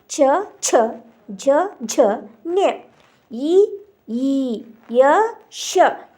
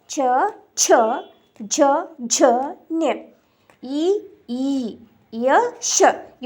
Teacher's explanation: ತಾಲವ್ಯದಿಂದ ಉಚ್ಚಾರಣೆ ಆಗ್ತಕ್ಕಂತ ಅಕ್ಷರಗಳು ಚ ವರ್ಗ. ಅವು ತಾಲವ್ಯ ಅಂತಂದ್ರೆ ದವಡೆಯ ಸಹಾಯದಿಂದ ಉಚ್ಚಾರಣೆ ಆಗ್ತಕ್ಕಂತದ್ದು